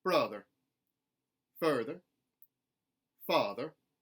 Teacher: we're going to keep the r coloration in the unstressed er